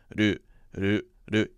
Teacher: You're actually touching your tongue to the roof of your mouth for a very brief moment. So it's two syllables and it's this sort of rolling R sound that replaces the L sound.